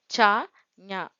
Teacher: மேல்வாய் அன்னத்தின் இடைப்ப பகுதியை நாவினது இடைப்பகுதி பொருந்த பிறக்கும் எழுத்துக்கள்